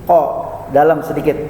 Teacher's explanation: Ko itu makhrajnya adalah di pangkal lidah.